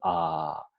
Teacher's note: Por ejemplo, cogemos la mano y la ponemos sobre la garganta y pronunciamos, por ejemplo, A. Entonces, al pronunciar A, notamos la vibración de las cuerdas vocales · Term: sonido sonoro